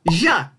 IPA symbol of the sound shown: ʒ